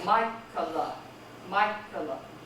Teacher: Stress the first syllable.